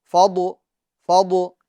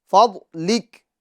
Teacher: مگر اس ضاد کے اندر قلقلہ نہیں کرنا ہے، یعنی فضو، فضو ایسا نہیں۔